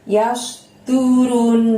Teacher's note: runnya ditahan dan ditekan selama 2 harokat karena bertemu dengan nun tasydid